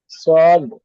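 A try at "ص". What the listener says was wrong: কোয়ালিফ টান হবে সদ। 3 আলিফ টান দিয়ে বলেন।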